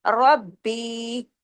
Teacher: امر ربی، ربی میں دیکھیے با پہ تشدید ہے، ڈبل با ہے، رب اور با، را با زبر رب، اور با یا زیر بی، ربی، یعنی با کو ڈبل پڑھنا ہے، سختی سے پڑھنا ہے، اور را کو ہیوی پڑھنا ہے